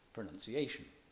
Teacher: pronunciation on the 4th of its 5 syllables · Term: stressed